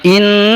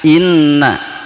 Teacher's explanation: Nun dan mim bertasydid maka itu harus didengungkan